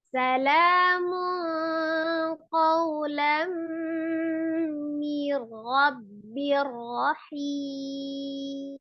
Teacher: Berarti ini termasuknya idgham juga, dilebur karena ditasdidkan ke huruf mim, aslinya lam berubah menjadi lam, tapi dengan bighunna, dengan hunna ya, dengan dengung.